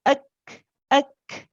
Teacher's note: you stop the sound first and then you hear the breath later